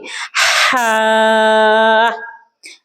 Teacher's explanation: ہا ادا کرتے وقت اس بات کا دھیان رکھیں کہ ہا کی آواز جو ہے وہ سینے سے نہیں بلکہ وسط حلق سے نکلنی چاہیے، جیسے کہ ہم سانس کو اپنے اندر کی طرف کھینچتے ہوئے باہر نکالیں گے۔ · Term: حرف ہا